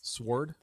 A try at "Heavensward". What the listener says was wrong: It's Heaven's Ward as one word. So it's not sword, it's ward.